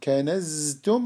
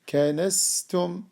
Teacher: For example, the letter Zay, if we open the vocal cords, the sound will run, the breath will run with it, and then you will have Sin. Kanaztum, it will be Kanastum, and so on.